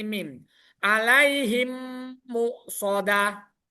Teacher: Dengan memasukkan huruf mim mati ke dalam huruf mim setelahnya yang disertai dengan mendengung. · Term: idgham mimi